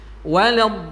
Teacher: Di lamnya juga ada tasydid, maka ada sentakan sedikit.